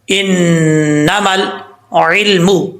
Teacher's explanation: آگے ہے انما, یہاں پر نون کے اوپر شد ہے، غنہ کریں گے ایک الف کی مقدار، میم کو جب لام سے ملائیں گے دونوں الف بھی اس میں گر جائیں گے